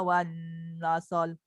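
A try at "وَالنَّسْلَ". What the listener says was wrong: Jangan nasol. Pastikan sin tu mati.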